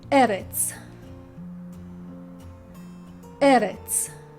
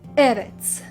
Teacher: Notice how the stress or the accent falls on the first syllable and not on the second.